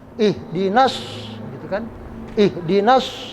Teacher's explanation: Sekarang as-sirata alnya al samsiyah. Alnya enggak kebaca, enggak kedengeran al ya. Langsung shad.